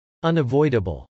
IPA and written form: .ʌnəvˈɔɪdəbəl (unavoidable)